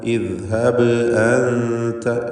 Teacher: ബാഇന് ഖൽഖല സുഗ്റ നൽകി ശബ്ദം ഹറക്കത്ത് പോലെ ചലിപ്പിക്കണം. മജ്ഹൂറായ ജഹറിൻ്റെ അക്ഷരമാണ്.